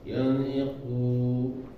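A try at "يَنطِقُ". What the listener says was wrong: Punya jangan dipanjangin ya.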